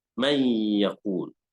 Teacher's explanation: So what happened is the noon is transformed into the different letters. It's not noon anymore, it's a ya. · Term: Idgham